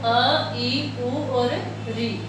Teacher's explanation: इनके उच्चारण में जो लगने वाला समय है वो एक मात्रा का है।